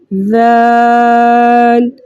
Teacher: ہم نے بہت نرمی، ٹھیک ہے، اور سہولت کے ساتھ اس کو ادا کرنا ہے بغیر سیٹی کے